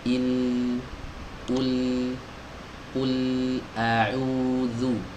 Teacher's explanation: sebagian suara itu terhalang, sebagian lagi keluar lewat jalur samping kanan dan kiri, melenceng suaranya. Inilah yang disebut dengan inhiraf.